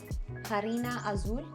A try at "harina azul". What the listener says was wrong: Harina. You don't pronounce the H.